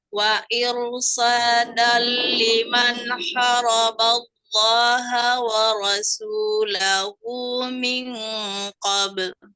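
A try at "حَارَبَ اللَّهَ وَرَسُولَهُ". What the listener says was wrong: Tapi cenderung yang haroba ini dibacanya jadi pendek. Haknya harusnya panjang kan 2 harokat ya ini.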